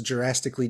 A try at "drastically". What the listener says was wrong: it sounds like you're saying Jurassically instead of drastically. like it's like Jurassic Park.